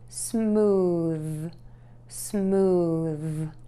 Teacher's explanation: Stick your tongue all the way out of your mouth and say that TH sound. And make sure that your voice box is on and moving, because this is a voiced TH sound. And keep that air moving.